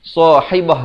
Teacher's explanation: Haibah dan ta marbutah, ta simpul itu. Kalau kita nak waqaf, ditukarkan kepada bunyi ha. Kalau kita nak wasal, dia kekal bunyi ta.